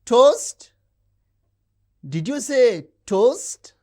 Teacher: the high rise usually associated with questions